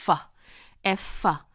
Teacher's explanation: Fมันเป็นเสียงvoicelessคือหมายถึงว่าปล่อยลมออกมาสบายๆ